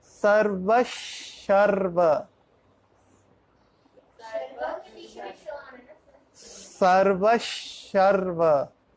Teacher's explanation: After Visarga there is Sharva, so it will be pronunciated as Sarvasharva. There is a half sh instead of Visarga.